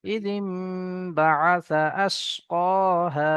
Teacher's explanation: এখানে নুন সাকিনের পরে বা এসছে, এখানে নুন সাকিনের আওয়াজকে মিমের দ্বারা তো পরিবর্তন করে পড়তে হবে। জি, একালি পরিমাণ গুণনা করে পড়তে হবে। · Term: ইকলাব